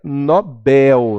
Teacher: ela é uma oxítona e as pessoas erradamente pronunciam como paroxítona